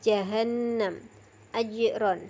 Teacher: keluar dari tengah lidah dekat langit-langit atas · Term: huruf Jim, huruf jim